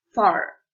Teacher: The lower lip comes into contact with the upper front teeth to articulate the sound. There is friction between the lower lip and the teeth.